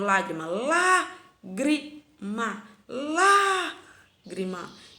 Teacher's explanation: A sílaba tônica dela é a antepenúltima. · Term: proparoxítonas